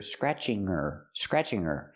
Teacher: Remember, her is not a stressed word, so we don't pronounce the H.